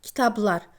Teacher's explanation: Burada B-dan sonra L samit olduğuna görə kitablar kitab səhifəsi kimi tələffüz olunur. Yəni B P-ya çevrilir tələffüz zamanı